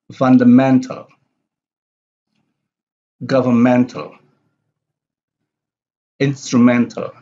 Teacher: have the primary stress on the second syllable from the last